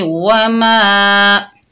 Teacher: मीम के ऊपर जबर, आगे अलिफ मद्दा है, एक अलिफ की मिकदार खींच कर पढ़ेंगे